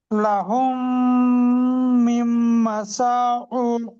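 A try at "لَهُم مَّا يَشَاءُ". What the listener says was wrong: মিম নয়, লাহুম মা ইয়াশাউ।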